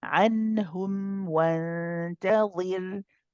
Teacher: Here the noon is pronounced clearly because it's followed by a throat letter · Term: إظهار حلقي